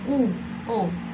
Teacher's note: vokal belakang, vokal yang dihasilkan saat posisi lidah berada di bagian belakang